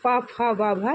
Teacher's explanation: प फ ब ये ओष्ठ से होता है